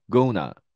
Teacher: T 발음이 앞에 있는 N 발음의 영향을 받아서 발음의 음가가 N으로 바뀌는 거죠. 그리고 끝소리 O는 대표 음가가 아 발음입니다.